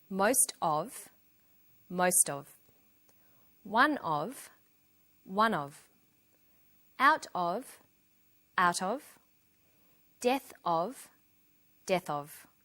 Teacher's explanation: notice that of in these phrases is unstressed